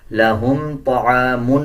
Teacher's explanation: طا کو پر یعنی موٹا پڑھا جائے گا، طا موٹے حروف میں سے آتا ہے۔ عین کا مخرج صحیح ادا کیا جائے گا، اکثر لوگ اس کو پڑھ دیتے ہیں تعامن، تعامن نہیں ہے بلکہ طعامن ہے۔